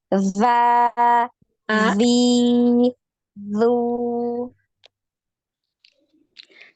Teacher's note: az, iz, uz, azza, za, zi, zu, Lagi azza, diletakkan ujung lidahnya letakkan di ujung gigi seri atas ya.